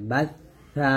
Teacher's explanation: জিহ্বাটা উপরে দুই দাঁতের আগার সঙ্গে লাগাতে হবে